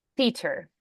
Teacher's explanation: bought tickets to the theater yeah the unvoiced th there yeah your instinct is to do the T but we need the th